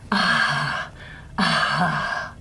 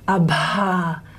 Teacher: So it's in between voiced and voiceless. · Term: breathy voiced